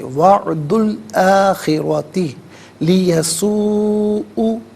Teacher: وعدو میں دال پر پیش ہے، اسے الآخرتی کے لام ساکن کے ساتھ ملائیں گے، درمیان میں سے الف یعنی حمزہ کو حذف کیا جائے گا، اور آخرتی میں را پر زبر ہے، را کو پر کر کے پڑھیں گے. وعد الآخرتی لیسوء.